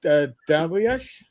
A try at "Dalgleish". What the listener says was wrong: Oh, that's pretty close. It's actually just two syllables, Dalgleish.